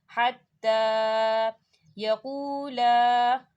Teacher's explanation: لا الف مدہ ہو رہا ہے، خالی الف سے پہلے زبر ہے، اس کے اوپر مد ہے، اسے 4 حرکت کے برابر کھینچ کے پڑھیں گے · حَتَّى تا کے اوپر کھڑی حرکات ہے، اسے 2 حرکت کے برابر کھینچیں گے